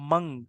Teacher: جب آپ منگ کہہ رہے ہیں تو اس میں آپ کی زبان کہیں نہیں لگتی منہ میں، زبان اپنی جگہ پہ اسٹل رہتی ہے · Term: اخفا